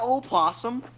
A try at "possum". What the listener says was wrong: It's pronounced possum. The O is silent. Always been silent.